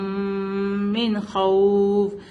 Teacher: خا come from the top part of the throat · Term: حروف حلقی